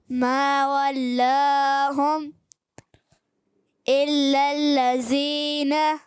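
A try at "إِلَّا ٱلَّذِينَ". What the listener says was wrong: زال کی ادائیگی الا الذین ہے،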